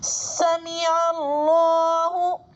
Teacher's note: اللہ کے لام سے پہلے عین پر زبر ہے تو اللہ کے لام کو پر پڑھیں گے. حروف شمسی میں سے لام آ رہا ہے تو الف لام کو نہیں پڑھیں گے.